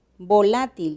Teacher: volátil tiene tres sílabas y la tónica es la penúltima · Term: palabras graves